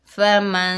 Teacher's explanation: नून का कुछ हिस्सा ज़ाहिर हो रहा है और कुछ हिस्सा छुपा हुआ है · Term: इक़फ़ा